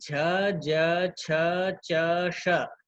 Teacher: क्योंकि झ का, ज का, छ का, च का और श का इनका उच्चारण स्थान तालु है